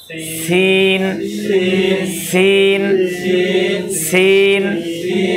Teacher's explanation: নিচের দাঁতের গোড়ার একবারে সামনের যে 2টা দাঁত, ওইটার গোড়ার সাথে ধাক্কা দিয়ে মিলিয়ে রাখেন।